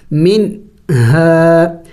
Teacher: منہا یعنی نون کو ظاہر کر کے پڑھیں گے، نون کو ناک میں نہیں چھپائیں گے